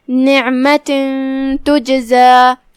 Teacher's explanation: کلمت تجزا میں یہاں حرف الجیم ہے جو کہ جیم پہ جزم ہے تو یہاں حکم ہوا قلقلہ. قلقلہ کا معنی ہے حرف کو ہلانا لہذا ہم جیم کو ہلاتے ہوئے یہ کلمہ کو ادا کریں گے · پھر حرف التا ہے کلمت تجزا میں, تا حروف الاخفاء میں سے ہے تو ہم تنوین کو بغیر ظاہر کیے ہوئے لیکن غنہ کے ساتھ یہ حکم کو ادا کریں گے